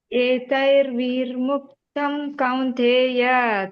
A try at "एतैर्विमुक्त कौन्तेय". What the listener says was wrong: ಅಲ್ಲಿ ನೀವು ಏತೈರ್ ಅಲ್ಲಿ ಅರ್ಕವತ್ತು ತೈ ಆದ್ಮೇಲೆ ಬರ್ತದೆ, ವಿ ಆದ್ಮೇಲೆ ಇಲ್ಲ. ಏತೈರ್ ವಿಮುಕ್ತ ಕೌಂತೆಯ